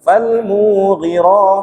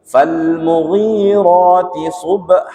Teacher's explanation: Kadang-kala di ayat ketiga terbaca falmu, nah dipanjangkan gitu, falmughira, padahal salah itu. Yang benar falmughi, ri-nya yang panjang. Kenapa? Karena ri-nya itu ada ya sukun setelahnya, diikuti ya sukun, dia mat tabi'iyah.